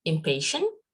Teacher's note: The bilabial ma is followed by pa, which is also a bilabial.